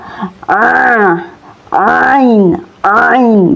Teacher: Keluarnya huruf ain ini dari bagian ujung tenggorokan atau yang disebut adnal halq, tepatnya dari persentuhan antara bagian belakang lidah ya dengan ujung ufula.